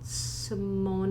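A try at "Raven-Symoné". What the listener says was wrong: is not Simone. It's Simone or Simone. Like you pronounce the E at the end because it's French or.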